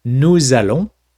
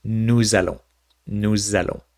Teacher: the s and the a together and we say no zello it makes the z sound because that s kind of goes into the a and it goes no zelo nuzello same thing with vu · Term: liaison